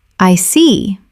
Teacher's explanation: When you show understanding with, I see. your tone drops slightly to show calmness. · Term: intonation